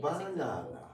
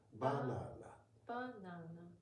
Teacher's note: Banana. So it actually starts higher and goes lower. Okay. Ba is high. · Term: high pitch and low pitch